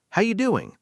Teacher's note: Nobody says, How are you doing? in a casual greeting. The R disappears.